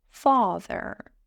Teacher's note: But how about a word like father? that needs a long /ɑː /